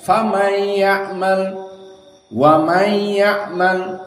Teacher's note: qiraah Hamzah idgham sawa min haythu nun yadkhul ilayya, hadahu wal idgham, walakin gunnah ma fi.